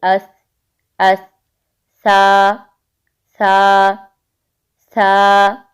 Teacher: तो जब जुबान की नोक ऊपर के दांतों के किनारों से टच हो तो नर्म आवाज में सा अदा होता है